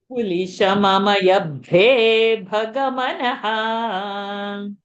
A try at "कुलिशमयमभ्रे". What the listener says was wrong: There's only one ma, isn't it?